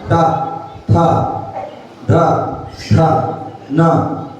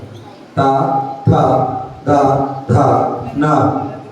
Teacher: दांतों में हम जीभ मार रहे हैं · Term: दंतोच्चारण